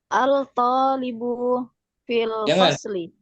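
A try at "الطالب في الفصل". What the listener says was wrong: Jangan al-talibu berat. Al-talibu berat. Jangan dibaca alif lamnya. Lamnya jangan dibaca. Syamsiyah dia.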